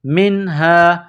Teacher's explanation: نون ساکن کے بعد ہا ہے، حروف حلقی ہے تو یہاں آواز ناک میں نہیں چھپانی ہے